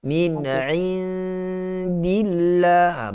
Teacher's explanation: Dia tidak begitu tepat untuk huruf ain itu yang sepatutnya keluar pada pertengahan tekak. Satu lagi huruf nun itu, ikhfa itu kita sedikit panjang lagi sedikit, berikan kesempurnaan gunnah pada huruf ikhfa itu, nun yang mati.